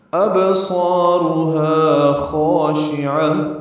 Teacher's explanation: حمزہ بالجہر ادا ہوگا، با ساکن میں قلقلہ، صاد پر، الف مدہ بھی پر، را بھی پر، ہا الف مدہ ہے، 2 حرکات لمبا ہے.